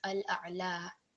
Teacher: a letter which has a fatha and is followed by a blank ya, what happens is that it will be extended to 2 seconds of prolongation. You will have a vertical fatha at the end.